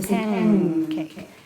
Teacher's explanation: the N takes on the place of articulation of K